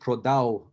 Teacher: in Western Ukraine, there's a tendency to pronounce it prodau, almost like a W, but that's not proper.